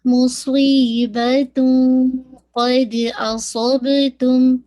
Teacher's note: تو اخفا ہیوی ہوگا کیونکہ قاف از دا ہیوی لیٹر